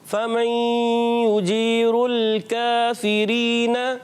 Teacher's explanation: काफ पर खड़ा ज़बर आने की वजह से एक अलिफ यानी 2 हरकत खींच कर अदा करेंगे